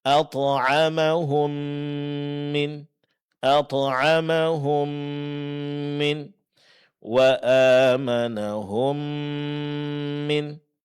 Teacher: mim sukun bertemu dengan mim yang dikenal dengan istilah idgham mimi. Praktiknya persis seperti kita membaca huruf mim yang bertasydid.